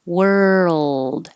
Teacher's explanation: as you move from the r to the L keep making sound world and hold it in the L position for a little · from the r to the L keep making sound world and hold it in the L position for a little longer than you think you need to so that the L can be heard